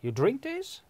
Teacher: with the rising intonation, the sentence becomes, from declarative becomes a question now